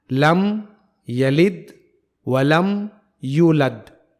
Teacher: لم یلد ولم یولد، یہاں 4 جگہ حرف لام ہے، لم یلد ولم یولد، اور ان چاروں جگہوں میں حرف لام کو باریک پڑھا جائے گا، کیونکہ یہ لام یہاں لفظ اللہ کا لام نہیں ہے۔